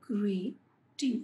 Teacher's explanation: And in these two syllables we have given stress on the first syllable because it is receiving a greater breath force and emphasis.